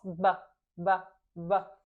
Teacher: Você vai sentir no máximo um pouquinho do quentinho, mas você não vai sentir ar. E tem voz.